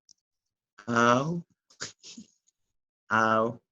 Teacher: The tongue begins back and lower in the air cavity and moves to a M high from position. I the mandible moves from an open to a more closed position